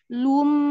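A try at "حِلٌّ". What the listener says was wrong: Nah, yang tidak monyongnya waktu lu aja, waktu mim itu sudah balik. Lu-em. Iya, tapi nanti baliknya nggak perlu di kulum ya. Cukup di pinggul aja.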